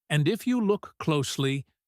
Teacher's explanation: she stretches the word closely to draw their attention. This is a focus marker.